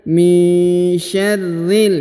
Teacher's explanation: huruf ri langsung sambung masuk ke huruf lam yang berharokat sukun